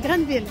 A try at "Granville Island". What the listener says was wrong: Granville? Granville Island. C'est pas graine, mais c'est grande. G-R-A-N. Granville Island.